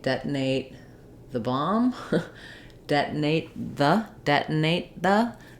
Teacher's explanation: I'm going to use an unreleased T and release right into the th